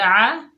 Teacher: عین کو حلق کے درمیان سے ادا کیجئے